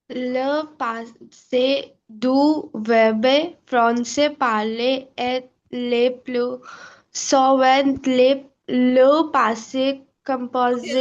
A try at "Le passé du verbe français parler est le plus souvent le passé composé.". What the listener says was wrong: Okay, so no du verbe, no e sound du verbe. It's silent here. Français parler est le plus souvent le passé composé.